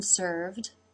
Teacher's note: the lip comes up to make the V in served